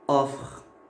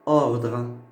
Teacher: Ordre. Le O au début. Il est ouvert. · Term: O ouvert